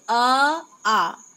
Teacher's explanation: जैसे अ, आ, इनका उच्चारण स्थान क्या है, कंठ है। अ या आ का जब हम उच्चारण करते हैं तो हमारी जो आवाज है वो कहाँ से निकलती है, गले से निकलती है। कंठ का अर्थ है गला, अर्थात अ तथा आ का उच्चारण स्थान कंठ है।